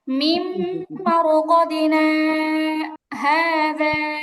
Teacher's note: তারপরে মিম্বার কদিনা, এখানে মিম নুন সাকিনের পরে মিম আসছে, ইদগামে বা গুন্না, গুন্না করে পড়তে হবে